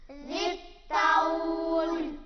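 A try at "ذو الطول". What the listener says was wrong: ज़ाल है, ज़ा नहीं है, ज़ाल। ज़ित्तौल।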